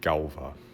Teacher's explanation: one really characteristic Icelandic vowel change, which is the old rounded long A to ow